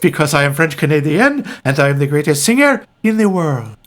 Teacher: sing high and not pronounce anything well no and you have when you talk you have to talk in a breathy way and very up and down